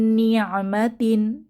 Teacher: নুন সাকিনের পরে আবার নুন এসেছে তো এখানেও আমরা গুন্নাহ সহ মিলিয়ে পড়বো